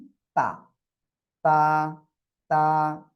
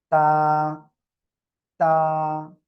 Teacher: জিহ্বার আগা দুই দাঁতের গোড়ার সঙ্গে লাগিয়ে উচ্চারণ হবে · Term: তা অক্ষরটা